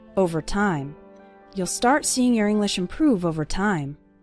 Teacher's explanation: Stress on the second syllable, improve